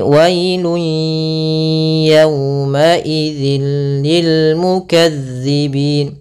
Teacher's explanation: suara tanwinnya atau suara nunnya ke huruf ya, maka hilang bunyinya, tapi dia masih menyisakan suara bunyi dengan gunnahnya. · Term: idgham bi gunnah